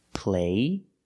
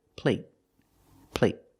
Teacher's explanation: when you have a t at the end a stop T it makes a vowel shorter